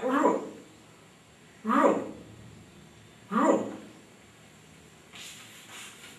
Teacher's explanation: इसका उच्चारण र। जीभ मुड़ती है और पीछे मूर्धा जहां कौवा होता है वहां पर जाती है और फिर ये उच्चारित होता है रु रु रु। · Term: ऋ